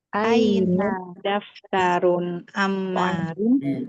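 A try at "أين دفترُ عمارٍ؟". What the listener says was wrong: Daftaru, bukan daftarun ya. Aina daftaru Ammarin?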